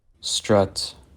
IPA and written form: stɹʌt (STRUT)